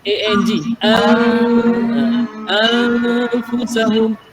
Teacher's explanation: A-N an A-N-G anfusahum, bukan anfusahum. Anfusahum ujung lidah kita tidak kat langit-langit, tapi A-N-G anfusahum. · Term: ihfa